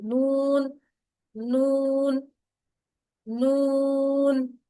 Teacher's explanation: نون جو ہے سامنے کے جو ٹوٹل 6 دانت ہیں، یعنی دانت 6 دانتوں کے مسوڑوں سے لگانے سے ادا ہوتا ہے